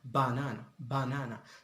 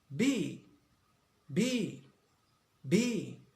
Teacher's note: So the lips are closed, then opened, released. Then we hear the sound B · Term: bilabial sound